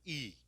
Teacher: हम ई का उच्चारण करेंगे तो जीवा का आगे का भाग है वो सक्रिय रहेगा